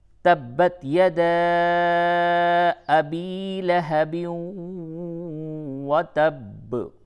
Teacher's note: تبت، یہ تا میں بالکل ہی قلقلہ نہ کریں، اور با کے اوپر تشدید ہے۔ تشدید کے معنی ہوتے ہیں سختی کے، تو تا کو با سے سختی کے ساتھ ملائیں